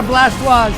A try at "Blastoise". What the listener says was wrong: You just pronounced Blastoise with a French accent. That's weird.